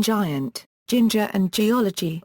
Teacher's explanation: A voiced palato-alveolar affricate, generally before I or E